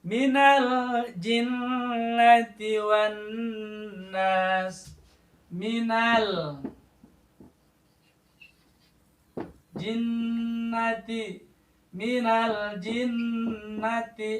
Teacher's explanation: alif lam bertemu dengan jim, lamnya hidup, artinya lamnya jelas, nampak, terdengar. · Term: izhar